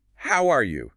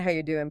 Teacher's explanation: Notice how the R and the full U sound just kind of vanish. They blend into that quick y sound.